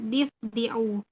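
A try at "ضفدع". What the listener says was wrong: Difda. Dalnya fathah. Difda.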